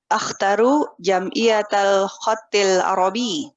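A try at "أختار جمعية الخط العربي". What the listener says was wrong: Jamil, bagus.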